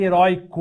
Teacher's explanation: heróico é derivado de herói continua com ditongo aberto mas agora não é mais uma oxítona esse uma paroxítona antigamente